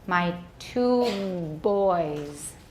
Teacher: After the vowel in boys, there is a fricative with a more nearly random waveform pattern, though there are some voicing vibrations intermingled with the voice.